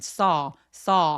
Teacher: saw 하면서 아나 어의 애매한 사이처럼 턱을 길게 벌려 줍니다.